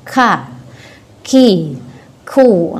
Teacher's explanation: Ketika mengeluarkan huruf kaf dari makhrajnya itu ada sedikit desis. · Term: sifat hamas